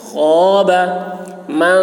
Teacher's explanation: خو کی آواز موٹی ہوگی، حلق سے ادا کریں گے